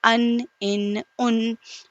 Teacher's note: زبان کا کنارہ اوپر والے دانتوں کے مسوڑے سے نون ادا ہوتا ہے